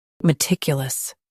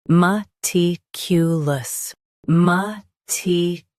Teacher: US uses kya. UK uses kyu. Watch that middle sound.